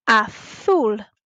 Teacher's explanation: The second colour, azul, has a Z in it. And a Z in Spanish is always a th sound, like in the number 10. So we have to say azul.